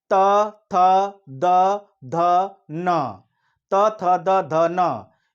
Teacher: जिह्वा का अगला हिस्सा अगले दांत के अगले हिस्से से टच हो रहा है, तो ये है दंत।